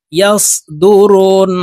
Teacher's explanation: তো এখানে দেখুন এই যে পেশ হরকতের বাম পাশের হরফ নুনের উপরে তাসদিদ আছে, এই কারণে এই র তাসদিদওয়ালা নুনের সাথে নাকের বাসি থেকে 3 সেকেন্ড পরিমাণ গুন্নাহ করে ধরে রাখবো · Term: ওয়াজিব গুন্না